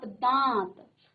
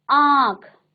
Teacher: वायु है आपके मुख से और नाक से दोनों से बाहर निकलती है, तब उस वर्ण के ऊपर जो है एक चंद्र बिंदु लगाया जाता है। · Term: अनुनासिक